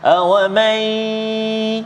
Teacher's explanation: ada dengung pada nun mati bertemu dengan ya, idgham ma'al gunnah. Awamai, dengung dua harakat.